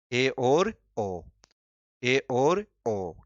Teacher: अर्ध समृद्ध ए और ओ, ए और ओ, क्योंकि इनमें मुख कम खुलता है। प्रैक्टिकल में इस शब्द का अर्थ तो होता है कम खुलना, परंतु प्रैक्टिकल में जब इनको बोलेंगे तो ई ऊ से मुंह थोड़ा सा ज्यादा खुलता। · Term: अर्ध समृद्ध स्वर